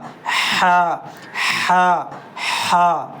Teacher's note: اور ہا حلق سے نکلے گا